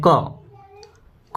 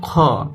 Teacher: जैसे हम बोलते हैं क क में क कम हवा निकला हम बोले ग कम हवा निकला ख बोलते हैं ख तो बहुत हवा निकलता है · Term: अल्पप्राण